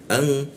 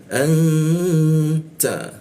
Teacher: Kita dengungkan, n-nya berubah jadi eng dia, ang. Nah, eng-nya di mana?